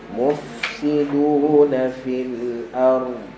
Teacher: lepaskan hams dulu pada fa, kemudian baru masuk pada sin